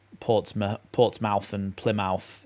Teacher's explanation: people have called it muth rather than mouth because it's easier to say